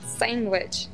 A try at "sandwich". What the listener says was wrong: No. The word sandwich does not have a G. Just like the word college does not have a D.